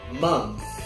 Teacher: Você pode colocar a sua mão na garganta e falar month. Você vai ver que na última sílaba você não sente as suas cordas vocais.